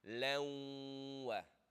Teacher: You're going to merge the noon sound into the waw, and you're going to hold for ghunna of 2. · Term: idgham with ghunna